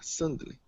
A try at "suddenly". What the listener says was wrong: I want to hear the "ly" at the end.